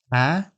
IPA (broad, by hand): æ